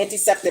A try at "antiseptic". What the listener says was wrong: Antiseptic. You said antiseptic. Antiseptic. One word. You made it in 2 words.